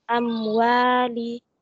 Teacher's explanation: mim sukun bertemu dengan huruf waw hukumnya izhar syafawi atau dibaca jelas. Wa hukumnya mat tabi'i dibaca panjang 2 harokat.